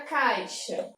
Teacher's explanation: Então, quando eu falo, por exemplo, a palavra caixa, nesse caso aqui, né, a gente separa a sílaba assim, eu tenho uma vogalzinha aqui, uma vogalzinha aqui. Essa letra I, ela não é chamada de vogal. Primeiro, porque ela tem uma intensidade menor. E segundo, porque dentro de uma mesma sílaba, a gente não pode ter 2 vogais. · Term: semivogal